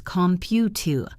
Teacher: The last syllable is a schwa.